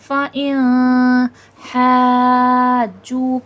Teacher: फ़इन हाजू का हा हुर्फ़ हल्क़ी में से है और ये वाला हा वसतुल हलक़ हलक़ के दरमियानी हिस्से से अदा होता है और हा पे बड़ा मद है 5 से 6 अलिफ की मिक़दार के बराबर खींच के पढ़ा जाएगा। · जू का वाव मद्दा है, वाव साकिन से पहले पेश है, थोड़ा खींच के पढ़ा जाएगा